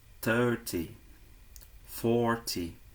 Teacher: nas dezenas maiores, ou seja, de 30 a 90, a sílaba tônica está na primeira parte da sílaba.